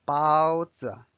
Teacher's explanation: notice the bao is first tone, but the z is neutral.